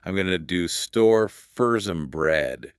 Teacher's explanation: The stress is on store and bread. Bum, bum, buh.